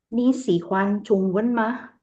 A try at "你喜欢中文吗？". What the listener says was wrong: Oke, cuma nada aja.